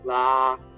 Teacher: the ping sheng is easier on the throat, so it's sort of a more open throat, la, and then the others are more constricted throat.